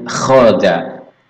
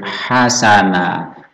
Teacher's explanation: Untuk kho ini ada serak, ada semacam dahak begitu ya, beda dengan ha, ini bersih lembut